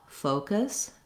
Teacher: you may just need to exaggerate that O more than you think, and then particularly hold it longer. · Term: long O